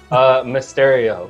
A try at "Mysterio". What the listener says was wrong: It sounds like you're saying a stereo at the end. Mysterio. Like in the boombox on the shoulder.